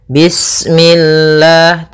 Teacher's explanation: lafal Allah ketika sebelumnya kasrah maka dia dibaca dengan tipis, ya, dengan L.